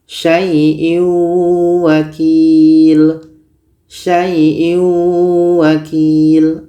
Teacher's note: ini kita masukkan ke wau kita baca syaaiin wakil Sai wakil tanwin ini kita masukkan ke wau tapi dia kurang sempurna masuknya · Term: idgham naqis